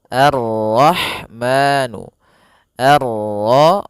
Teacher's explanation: Di sini ada alif lam syamsiyah yaitu alif lam yang ditulis tapi ia tidak dibaca sehingga kita langsung masuk ke huruf ro